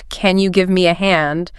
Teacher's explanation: A quick, slightly higher pitched, Can you give me a hand? might suggest a more immediate need